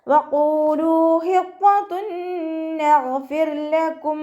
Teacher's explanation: ഹ മഖ്റജ് വസത്തുൽ ഹൽക്കാണ്, തൊണ്ടയുടെ മധ്യഭാഗം · ലാമിൻ്റെ കൂടെ വാവ് മദ് വന്നു, 2 കൗണ്ട് നീട്ടിക്കൊടുക്കുക · ഖാഫ് ഇസ്തിഅലാൻ്റെ ലെറ്ററാണ്, ഉയർത്തിച്ചിരിക്കേണ്ട അക്ഷരങ്ങൾപ്പെട്ടതാണ്, തഫ്ഹീം ചെയ്യുക